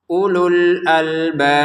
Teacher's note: Untuk albab ini baca 6 harokat, kemudian di ujung-ujungnya ada pantulannya ba.